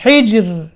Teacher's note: یہاں را کیا ہوگی, باریک ہوگی